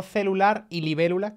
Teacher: no hizo que celular que es agudo claro coincidiera con libélula que es esdrújula